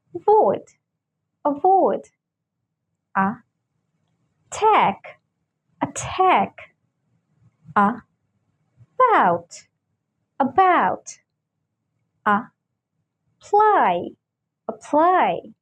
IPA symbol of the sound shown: ə